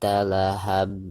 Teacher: dihukumi Mato by dibacanya dua harokat zat Allah Hab di perhatikan ketika diwakafkan maka huruf ba' disini itu harus di pantulkan karena hurufba merupakan salah satu daripada huruf Qalqalah bahkan dihukumi qolqolah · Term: qolqolah kubro